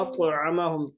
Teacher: طا پہ قلقلہ ہوگا دو آوازیں ہلے گی